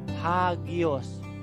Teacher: Jadi nanti ketika kita sebutkan, bukan sebutkan hagios, tapi ditambahkan H di depannya. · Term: tanda pernafasan kasar